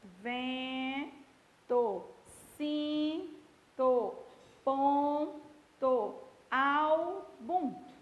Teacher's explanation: Você tem duas letras, mas só o som da vogal é que vai ser pronunciado. É chamado de dígrafo vocal ou dígrafo nasal, porque ele nasaliza mesmo